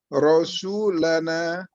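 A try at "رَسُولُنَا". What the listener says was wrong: Jangan di fathah. Iya, Rasuluna. Jadi dibaca itu domah semua, Pak. Domah semua.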